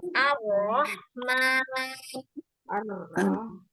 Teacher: ketika ro diucapkan suaranya mengalir di tengah-tengah celah ujung lidah. Tengah-tengah ujung lidah. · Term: huruf ro